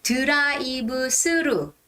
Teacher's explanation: for koreans th is translated to s sound because we don't have a th sound so we say tura ibu suru it sounds a bit like